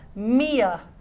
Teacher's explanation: when we connect me, to a vowel, we add a y sound. Mia.